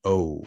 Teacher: we have our diphthong which is a mid back vowel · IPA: /ow/